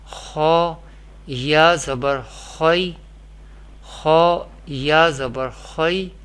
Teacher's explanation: How we pronounce here, Ya is sakin letter and Kha is mutaharrik letter, and Kha is pronounced with heavy voice because Kha is mustaliya letter, and mustaliya letter always pronounced with thicker voice or heavy voice in every condition.